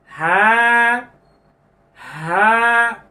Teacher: এই হরফটির নাম হলো হা। একেবারে কণ্ঠনালীর শুরু থেকে আসবে, আওয়াজটা ছেড়ে দিতে হবে। হা হা, মুখ ফাঁকা করেন, হা হা।